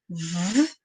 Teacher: esse som que sai espremido próximo à boca, batendo no dente. Né? A criança pode até sentir que sai ventinho, a gente fala assim com ela. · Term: som do V